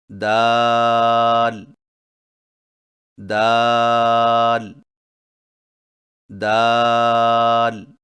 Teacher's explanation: دال کی ادائیگی میں زبان کی نوک کو سامنے والے اوپر کے دو دانتوں کی جڑ سے لگا کر باریک آواز میں پڑھیں